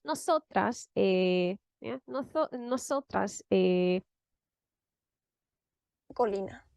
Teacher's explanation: she prolonged the vowel to give herself time to think